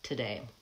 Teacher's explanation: Because it's unstressed, the vowel gets reduced from oo to the vowel schwa